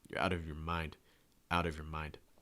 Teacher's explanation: the stress is on mind so you want to make sure that mind is the strongest word that you hear